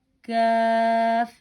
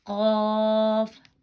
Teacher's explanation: یہ باریک کاف، یہ موٹا قاف اور یہ باریک کاف